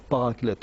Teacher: il est plus juste de dire paraclète en prononçant le T, parce qu'à l'origine c'est parakletos.